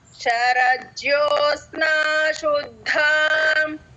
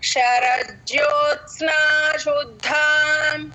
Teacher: అత్ అనేది పట్టుకొని కొన్ని సెకండ్స్ అలా పట్టుకొని సస్టైన్ చేస్తేనే త వినపడుతుంది లేకపోతే త సైలెంట్ గా అనిపిస్తుంది. చెప్పండమ్మ శరజ్యోస్నా శుద్ధం శరజ్యోత్స్నా శుద్ధం శరజ్యోస్నా